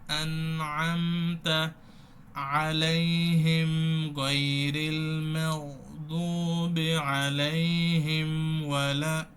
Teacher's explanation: মিমে গুন্না দিয়ে তারপরে যাবেন, এক হারাকা পরিমাণ, মানে হাফ আলিফ মনে গুন্না এখানে ধরে রাখতে হবে, না হলে এই সিফাতটা আদায় হবে না।